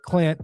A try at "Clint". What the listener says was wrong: Enunciate. Enunciate. Make sure you pronounce that N.